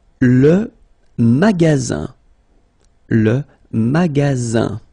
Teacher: La okay and it means Small Change magaz magaz okay remember you've got Only One S between two vowels then you get the sound Z